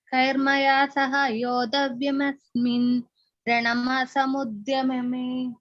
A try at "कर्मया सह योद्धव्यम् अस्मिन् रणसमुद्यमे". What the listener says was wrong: no you have to split it Kairmaya Saha Yodavyam Asmin Rana Samudyame Yodavyam